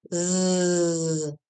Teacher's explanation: Touch your throat lightly with your hand and say the sound zzz. Can you feel your vocal cords vibrate or move? This is a voice sound. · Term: voiced S